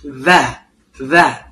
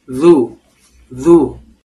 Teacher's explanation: Dalam bahasa Indonesia huruf dalal itu seperti d yang digabung ya. Untuk huruf dalal makhrajnya itu ujung lidah bertemu dengan ujung gigi siri bagian atas ya.